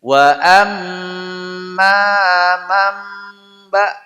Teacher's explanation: tulisannya manba dibaca mamba. Di situ ada mim kecil namanya hukum iqlab.